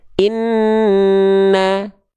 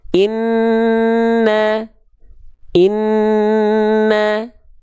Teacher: Nun ketika bertasydid dan mim ketika bertasydid itu harus ditahan berapa? Ditahan dengungannya 2 harokat. Hukum tajwidnya gunnah. · Di sini ada nun bertasydid. Nun ketika bertasydid dan mim ketika bertasydid itu harus ditahan